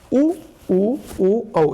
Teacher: वृत्ताकार स्वर जो होते हैं, उ ओ, यानी उ ओ को जब हम बोलते हैं तो हमारा होठ जो होता है वो गोला बन जाता है। हमारा जो होठ जो होता है वो वृत्ताकार बन जाता है, गोला बन जाता है, तो इसको हम वृत्ताकार स्वर बोलते हैं।